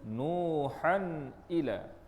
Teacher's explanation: dizahirkan sebutan tanwin tanpa ada dengung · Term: izhar halqi